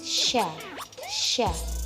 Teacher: jadi ujung lidah kita menempel pada langit-langit yang keras